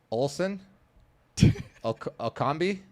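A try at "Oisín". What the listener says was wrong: It's not Olsen, it's an I. Oisin.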